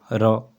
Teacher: अर्ध स्वर आएगा तो य और व प्रकंपित व्यंजन र उच्चारण में जीहवा वायु जीहवा से टकराकर लुढ़कती हुई सी प्रतीत होती है इसलिए र को लुंठित व्यंजन कहते हैं। र क्योंकि इसके उच्चारण में जीहवा में तीव्र कंपन होता है। इसे प्रकंपित व्यंजन भी कहते हैं।